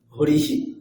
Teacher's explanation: হরিহি, এখানে ইকারের পরে বিসর্গ আছে, তাই হকারের সাথে ইকার যুক্ত হয়ে হরিহি এরকম উচ্চারণ হবে।